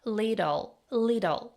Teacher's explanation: The double T in little becomes a flap T sounding like a soft D.